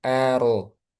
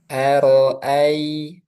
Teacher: A-nya tipis, ro-nya tebal.